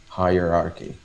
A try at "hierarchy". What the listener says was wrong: Uh-huh.